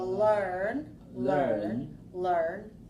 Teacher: So the first one is oral, l, and the second one is nasal, n.